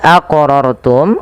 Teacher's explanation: wajib kita pantulkan pada lafal huruf qof karena ia termasuk daripada huruf-huruf qalqalah.